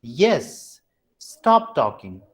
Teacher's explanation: So the movement is from high pitch to the low pitch. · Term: falling tone